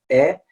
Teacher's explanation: it's an open mid sound. It's made at the front of your mouth. The position of your tongue is more in the front, and so you're saying eh.